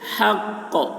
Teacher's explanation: قاف میں قلقلہ ہوگا، یعنی قاف کی آواز ڈبل نکلے گی